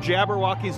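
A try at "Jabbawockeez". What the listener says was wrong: You know there's no R. You're saying Jabberwockies. It's Jabba.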